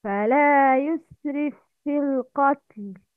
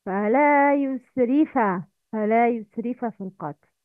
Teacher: in which silent fa should be merged in متحرك fa